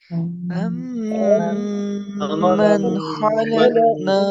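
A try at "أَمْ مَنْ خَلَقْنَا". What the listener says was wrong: نا، اکثر نو، نو یہ غلط ہوتا ہے، نو ناک میں آواز نہیں لے جانی. ام من خلقنا، نا، ٹھیک ہے نا؟ ہاں جب نہ کرنا ہے تو منہ کھول دینا ہے نا، ٹھیک ہے نا جی. ایک ہے نو، ایک ہے نو، یہ غلط ہے. نو نا فرق ہے، فرق ہے کہ نہیں فرق؟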